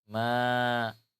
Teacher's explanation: Itu suara nun diiwat menjadi alif. Maka seperti ada alif didahului oleh harakat fathah.